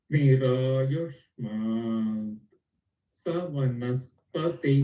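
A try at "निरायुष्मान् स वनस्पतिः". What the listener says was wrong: That is why I said Sa, just separately take it. Don't try to combine Sa and Vanaspati. No. Just pick the Sa separately. Agnirayashman Sa. Vanaspati. Vanaspati.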